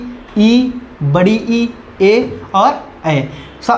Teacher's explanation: अग्रस्वर में देखिए, जो जीभ के अगले हिस्से से उच्चारित किए जाते हैं।